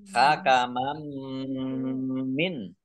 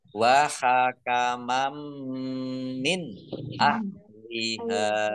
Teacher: Hakamam min ya, mendengung mim ditandai mimnya ada tasdidnya. Mim tasdid dibaca gunnah atau mendengung ditahan 2 harokat. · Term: idgham bi gunnah